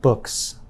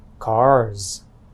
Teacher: books has a s sound at the end while cars has a z sound at the end